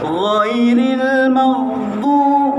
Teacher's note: Okey, tidak boleh go tawar, dia mesti ada huruf go, dia mesti ada bunyi kahak sedikit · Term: huruf gha